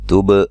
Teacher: تا کو باریک، با پہ قلقلہ، با کو ہلا کے پڑھیں گے